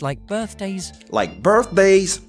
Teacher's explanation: Le premier point, birthdays, vous voyez que ça monte.